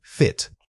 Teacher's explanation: Focus on the initial consonant F, making sure it's a clear friction of air over your teeth. Then drop into that relaxed short vowel quickly.